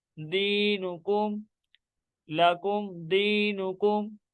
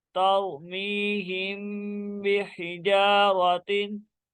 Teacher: यहाँ पे इक्फाई शफी का कदर लग रहा है क्योंकि मीम साकिन के बाद हरफ बा आ रहा है और यहाँ पे गुन्ना भी करेंगे।